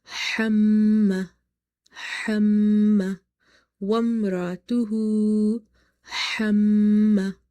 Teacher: Ha is from the middle of the throat, plus meme sound is having nasalization.